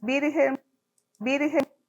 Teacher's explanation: en el espectrograma observamos que hay una oclusión y una explosión vocálica muy extendida. La R tiene una duración promedio de 20-30 milisegundos y aquí está teniendo una realización de aproximadamente 50 milisegundos.